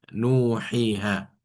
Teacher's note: mad asli maka dibacanya dua ketukan